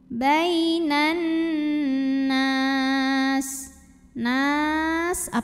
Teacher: Nun bertasydid cara bacanya dengung bunyi n-nya tahan kurang lebih 2 harokat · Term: ghunnah